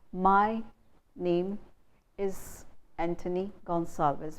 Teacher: So we are stressing my name is Anthony Gonsalves. We are stressing each and every syllable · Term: Indian English